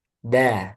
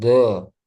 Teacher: Dal sama dengan makhrajnya dengan to dan ta. Bedanya dal dengan to, dal tipis.